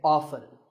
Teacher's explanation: the more common pronunciation is with the T silent